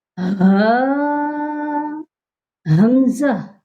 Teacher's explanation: ہاں اور حمزہ یہ دونوں حروف حروف حلقی ہیں، یعنی حلق سے ادا ہونے والے حروف ہیں۔ دونوں حروف کو حلق کے سب سے نچلے حصے سے پروناؤنس کیا جاتا ہے، جو کہ سینے کی طرف ہے،